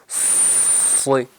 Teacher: زبان کی جڑ اوپر اٹھ گئی ہے، آواز بھر گئی ہے اور ادا ہو رہا ہے صاد۔